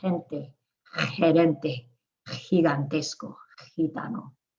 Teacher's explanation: So you can just make it like an H or a throaty H. In Spain, it's throatier, more Arab sounding.